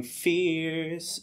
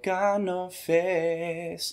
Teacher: he doesn't have to say the r